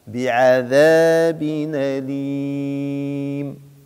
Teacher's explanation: عندنا بعد المد ميم ساكنة نتوقف عليها طبعا بالسكون